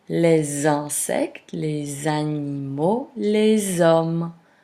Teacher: When les is followed by a word starting with a vowel, the normally silent final S of les is pronounced making a Z sound. This additional sound linking two words is called liaison.